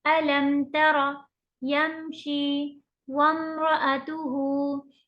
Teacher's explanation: मीम को हम clear clear पढ़ रहे हैं और खींच भी नहीं रहे हैं नाक में छुपा के वगैरह। तो ये हो गया इजहार, इजहार शफवी।